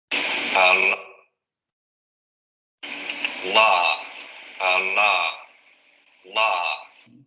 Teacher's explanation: La punta de la lengua hacia los alvéolos, el aire sale por los lados de la lengua y vamos a tener vibración de las cuerdas vocales.